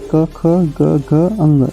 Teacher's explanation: स्पर्श व्यंजन में क, ख, ग, घ, अंग, ये कंठ है, इसको कंठ व्यंजन कहते हैं